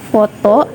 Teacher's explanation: Contohnya itu bunyi labiodental, di mana bunyi ini dibentuk dengan bibir bawah mendekati atau menempelkan pada gigi atas. Udara ini dapat terhalang antara bibir bawah dengan gigi atas.